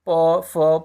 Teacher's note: ओष्ठ में कौन सा होगा तो ओष्ठ में हो जाएगा प फ प वर्ग के सारे